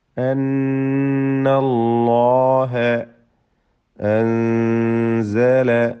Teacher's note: സാക്കിന നൂൻ ഇഖ്ഫാ ഹഖീഖി നൽകി മറച്ച് മണിച്ച് ഓതേണ്ടതാണ്, അവ്യക്തമാക്കി മണിക്കേണ്ടതാണ്.